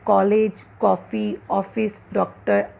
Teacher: पहला अर्धचंद्राकार औ ध्वनि जो आ और ओ के बीच की ध्वनि है। इसका प्रयोग अंग्रेजी शब्दों में ही मिलता है, जैसे कॉलेज, कॉफी, ऑफिस, डॉक्टर आदि।